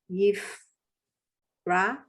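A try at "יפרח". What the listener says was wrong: Yeah, Yifrach. Yifrach. You have to go at the end. Yifrach.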